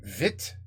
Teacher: le relâchement des voyelles I, U, OU, comme dans vite, jupe, poule